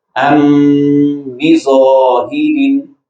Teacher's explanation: اور اگر با ہو میم ساکن کے بعد تو وہاں بھی غنہ ہوتا ہے لیکن اس کو اخفاء شفوی کہتے ہیں. وہاں میم ساکن با میں ایک اخفائی صورت یعنی اس کو چھپا کے ادا کیا جاتا ہے